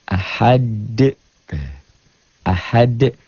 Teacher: Ahad bacanya ada e-nya. Kayak bola yang mantul jatuh tidak langsung diam, mengeper, mengembal. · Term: qalqalah